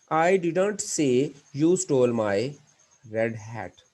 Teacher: your stress is on i the meaning contains the idea that someone else said it not me